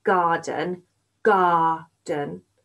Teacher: the last syllable goes a bit quieter when you're speaking so we call it unstressed